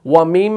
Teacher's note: होंठ जो है वो आपस में मिल रहे हैं, मुलाकात कर रहे हैं, लेकिन नाक के बांसे में आवाज़ गूंज रही है। इसे गुन्ना कहा जाता है। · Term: मीम मुशद्दद का गुन्ना